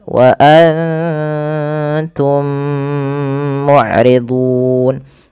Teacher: Karena mim mati bertemu dengan mim itu ada bacaan idgham mimi. Dan caranya adalah kita menahan bunyi mimnya. Kemudian berlafal mu'ridun, ada mad arid disukun.